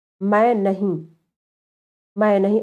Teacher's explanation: दीर्घ स्वरों के साथ अनुस्वार का उच्चारण प्रायः चंद्र बिंदु अथवा अर्ध अनुस्वार की तरह प्रयोग होता है।